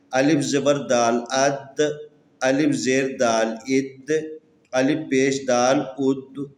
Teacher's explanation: یہ دال بھی ان حروف میں سے ہے جس کے اوپر قلقلہ ہوتا ہے، ہلا کے پڑھنا ہوتا ہے۔